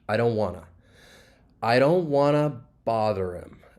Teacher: Want to, this is a common reduction, and you're going to reduce want to just wanna